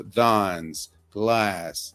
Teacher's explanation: In British English, these words often have a broader vowel sound like ah